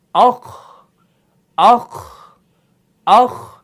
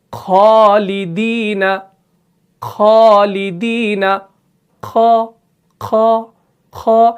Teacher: خ جو ہے یہ مفخم ہے، یعنی یہ موٹا پڑھا جانے والا حرف ہے، یعنی اس کے اندر ہمیشہ جو صفت پائی جاتی ہے اسے صفت استعلا کہا جاتا ہے.